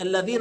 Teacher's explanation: الذال تخرج من طرف اللسان مع طرف الايه الاسنان